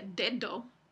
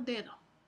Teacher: de la pronunciación exacta Entonces no se pronuncia dedo sino dedo la segunda d es más suave es fricativa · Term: alófono fricativo